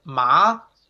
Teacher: is the second tone it's the rising tone mark so it's kind of like you're asking question ma mom